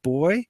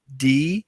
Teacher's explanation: They're both voiced, they're both stops. The only way they differ is place.